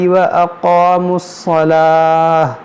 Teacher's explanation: یہاں پر دیکھیں تو بنا ہوا ہے, وقف مطلق ہے, تو یہاں پر رکیں گے تو اس گولتا کو ہا ساکنہ بنا دیں گے, صلاح پڑھیں گے.